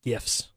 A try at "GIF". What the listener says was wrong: Where's the J? Where's the J in GIF?